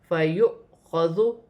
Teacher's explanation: جب بھی قرآن پاک میں الف پر اور حمزہ پر جزم کی حرکت ہوگی تو اسے جھٹکے کے ساتھ پڑھا جائے گا